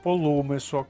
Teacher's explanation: наголос на у зверніть увагу